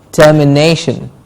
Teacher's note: Termination, the ne gets a stress.